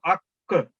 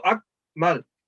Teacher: اگر میں کلکلا کروں اک, میری آواز بعد میں پھر اس کی سیکنڈ ساؤنڈ ہلکی سی آتی ہے تو اس کا مطلب کہ میں نے یہ 2 نقطوں والا کاف ادا کیا ہے اک در.